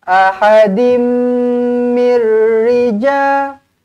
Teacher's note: tanwin bertemu dengan mim sabdu terus rapatkan bibir dengungkan dua harakat